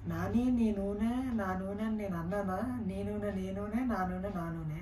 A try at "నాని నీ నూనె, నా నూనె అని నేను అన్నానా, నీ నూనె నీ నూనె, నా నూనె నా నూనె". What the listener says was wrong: 2 seconds కూడా గ్యాప్ ఇవ్వకూడదు. లేదు.